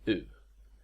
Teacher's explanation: this is actually pronounced very similarly to a long y but it's not as far to the front of the mouth it's similar to the vowels in French bu and German Tu · it's pronounced with compressed lip rounding that is with pursed lips